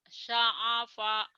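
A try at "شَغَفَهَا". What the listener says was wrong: Ya ada titik. Kalau nggak ada titik, ain bener. Ini ada titik jadi go. Syagofaha.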